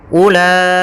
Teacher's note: ulaika pada lafal u itu tidak boleh dibaca ula, tapi langsung saja ke la-nya karena wawnya dianggap tidak ada.